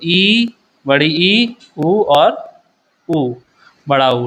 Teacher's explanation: संवृत मतलब यहां वो उच्चारण में कम मुंह खुलता है मुंह थोड़ा कम खुलता है